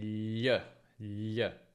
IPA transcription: ʎ